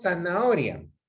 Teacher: Nosotros el sonido Z lo producimos como si fuera S. O sea, nosotros decimos zanahoria, cuando en realidad no es el sonido de la Z. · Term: ceseo